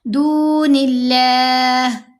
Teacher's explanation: من دون اللہ هل ينصرونكم أو ينتصرون من دون اللہ، یہاں دیکھیں نون کے نیچے زیر آ گئی، آگے لفظ اللہ ہے تو ہم نے لام کو باریک پڑھنا ہے، دون اللہ، اب لام کو موٹا نہیں کریں گے، بہت باریک پڑھیں گے